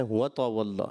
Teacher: اور اس کے علاوہ جو ہے آخری آیت میں آپ نے وَتَوَلَّى، تا جو ہے آپ نے باریک کرنا ہے